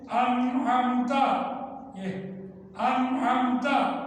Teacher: نون ساکن کی آواز کے بعد عین آ گیا ہے جو حروف حلقی ہے۔ نون ساکن کی آواز کا اظہار کر دیں یعنی ظاہر کر دیں